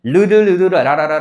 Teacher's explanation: 혀가 윗니 쪽에 붙었다 떨어졌다 붙었다 떨어졌다면서 그 양옆으로 공기가 흐르면서 나는 소리거든요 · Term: 유음